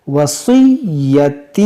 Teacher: یا مشدد ہے، اس کو پڑھیں گے دو بار